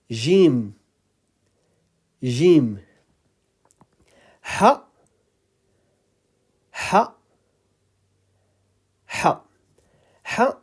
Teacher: ha is coming from the middle of the throat